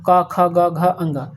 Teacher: क से कंठ से होता है ठीक है कंठ मतलब गला होता है